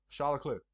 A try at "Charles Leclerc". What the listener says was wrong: No one said, you don't have a C at the end.